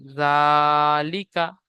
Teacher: জালের উপরে খাড়া জবার এসেছে খাড়া জবার আলিফ মাদ্দা সমতুল্য সুতরাং খাড়া জবারকে এক আলিফ পরিমাণ টান দিয়ে পড়তে হবে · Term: খাড়া যাবার